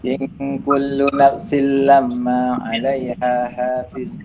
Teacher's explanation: Jangan bunyi dah nafsin tu. Nafsil lamma terus lompat. Jangan sin.